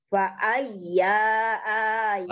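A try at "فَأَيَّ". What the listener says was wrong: Fa ayya, ianya pendek.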